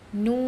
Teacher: Sebagai contohnya, Nun, baca 6 harakat, tiada gunnah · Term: mad lazim harfi mukhaffaf